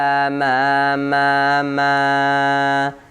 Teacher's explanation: Mim keluar dari bibir. Dua bibir. Gak ada kerja untuk lidah.